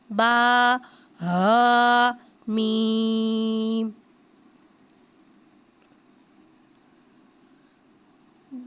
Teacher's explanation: یہاں ہا کو بھاری ادا کر کے پڑھیں گے. میم کو ایک الف یعنی تین حرکات کے برابر کھینچ کے پڑھیں گے